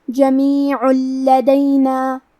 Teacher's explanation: کلمت جمیعن کے آخری میں عین پہ تنوین پیش ہے، پھر حرف اللام ہے کلمت لدینا، لام حروف الادغام بغیر غنہ میں سے ہے، تو ہم تنوین کو لام میں ملا کے بغیر غنہ سے لیکن تشدید کے ساتھ یہ حکم کو ادا کریں گے